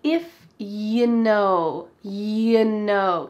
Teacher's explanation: "If you know." We have a common phrase, "You know." We've already talked about how, you, often becomes, "Ya." But we can reduce, you, even further to become simply y, that Y sound.